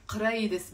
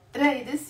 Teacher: in Lebanon we don't pronounce the qaf.